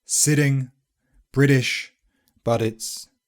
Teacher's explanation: It's very common to hear an American influenced voiced alveolar tap [r] when /t/ is before a weak vowel these days in England: SITTING BRITISH BUT IT'S But it's often actually more than just a tap, it's a fully fledged voiced alveolar plosive /d/ I'm not kidding! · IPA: [ɾ]